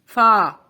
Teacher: جب اوپر کے دو دانت کا سرا ہمارے ہونٹ سے لگتا ہے تو فا ادا ہوتا ہے